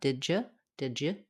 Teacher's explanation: The D and y sounds together can become a j.